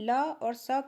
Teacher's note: ल और स का उच्चारण किस स्थान से होता है? तो दंत से होता है।